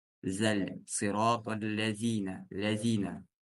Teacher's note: при произнесении буквы «заль» кончик языка должен выходить между резцами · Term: буква «заль»